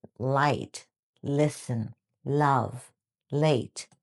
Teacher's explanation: The first is the light L at the beginning of words, and it's bright, clear, quick